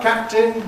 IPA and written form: ˈkæp̚tɪn (captain)